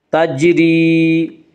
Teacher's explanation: یا مدہ کو 1 الف کے برابر کھینچ کر پڑھیں گے